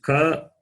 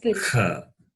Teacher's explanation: It differs only in the expulsion of air, right? So, the first one is non-aspirate.